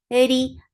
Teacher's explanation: Eri, ra is light. Whenever ra is with kasra, it is light. The sound is short.